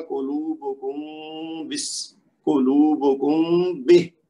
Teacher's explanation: میم کو تھوڑا سا لمبا کرنا ہے اور ناک میں آواز جائے گی، غنہ ہوگا تو یہ صحیح ادا ہو جائے گا.